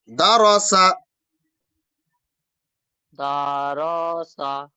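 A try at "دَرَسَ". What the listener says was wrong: আমি টান দিলাম আপনি টান দিচ্ছেন কেন দারসা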